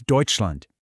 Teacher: really feel your voice go down at the end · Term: falling tone